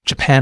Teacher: notice how the pan part of the word stands out that's because this syllable is stressed